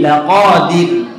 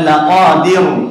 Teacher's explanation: laqadir itu tipis ya, karena sebelum ro itu harokatnya kasroh